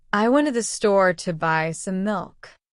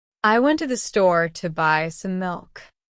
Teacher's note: You can hear that went, store, buy, milk are strong, but to the some are weak. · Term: strong beats